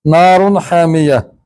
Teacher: तनवीन का नून जाहिर हो रहा है, उसकी वजह आगे हरफे हल्की आ गया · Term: इजहार